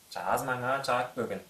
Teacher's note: «С» переходит в звонкую «з» между двумя гласными, между гласной и звонкой буквой, сонорной носовой буквой «М». Так сказать, голос охватывает и глухую букву «С».